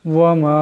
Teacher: এখানে মিমের উপর মদ আছে, এটাকে লম্বা করিয়া পড়তে হবে।